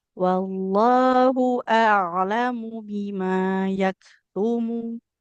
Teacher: dari hamzah pangkal tenggorokan ke ain di tengah tenggorokan